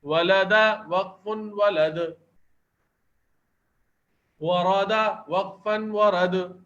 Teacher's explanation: یہ حروف بھی قلقلہ کیے جاتے ہیں ساکن ہونے کی صورت میں۔ تو یہاں دال ہم وقف کرنے کی صورت میں ساکن پڑھ لیں تو یہاں پر قلقلہ ہو جائے گا۔